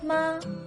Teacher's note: if the first tone is an e ma then often the second tone in comparison sounds like a d ma the third tone much lower like a g ma